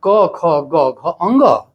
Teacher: अर्थात आ कु कवर्ग ह और विसर्ग का उच्चारण स्थान कंठ होता है